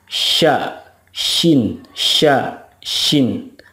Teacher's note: kalau syin itu tengah-tengah lidah bertemu atau menempel dengan langit-langit mulut